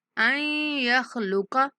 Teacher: یہاں نون کا ادغام کریں گے اور حمزہ کو یا کے ساتھ ملاتے ہوئے غنہ کے ساتھ ادا کریں گے